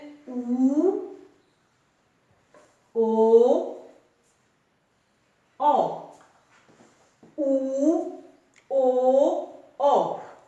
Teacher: ਜਿਨ੍ਹਾਂ ਸਵਰਾਂ ਦੇ ਬੋਲਣ ਦੇ ਸਮੇਂ ਜੀਭ ਦਾ ਪਿਛਲਾ ਭਾਗ ਕੰਮ ਕਰਦਾ ਹੈ ਉਹਨਾਂ ਸਵਰਾਂ ਨੂੰ ਪਿਛਲੇ ਸਵਰ ਕਿਹਾ ਜਾਂਦਾ ਹੈ।